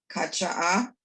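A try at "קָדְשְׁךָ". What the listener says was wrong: Kadshacha. The final chaf. The final chaf, the chaf sofi, always has a vowel. Sometimes it's the silent vowel, the shva. Sometimes it's this vowel. So if it were, it couldn't be kadshacha. So it's kadshacha.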